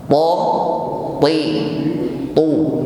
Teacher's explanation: Tidak ada hamas atau nafas yang menyertainya. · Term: huruf ta